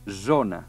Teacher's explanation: una esa como la de la paraula sopa pero intentan fer vibrar las cuerdas vocales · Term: esa sonora